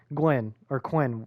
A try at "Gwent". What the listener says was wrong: It's like Gwen with a T. Gwent.